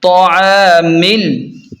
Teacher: میم کو ڈائریکٹ لام کے ساتھ ملا کر پڑھیں گے، یہ بیچ والا الف نہیں پڑھیں گے